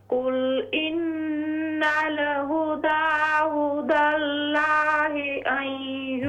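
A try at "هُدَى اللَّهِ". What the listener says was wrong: हुदल्लाहि, लफ्ज़ अल्लाह कलाम मोटा करके पढ़ें। हुदल्लाहि।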